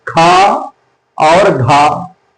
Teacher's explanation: प्रत्येक महाप्राण के उच्चारण में मुख से वायु कुछ ज्यादा मात्रा में निकलती, अल्प प्राण में थोड़ा कम निकलती है और महाप्राण में थोड़ी सी ज्यादा वायु निकलती।